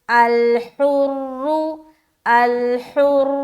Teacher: الحر اس را کو موٹا رکھنا ہے، ہا نکالیں گے، الحر، الحر، اس کے بعد بالحر، اس را کو ہمیں کیا کرنا ہے؟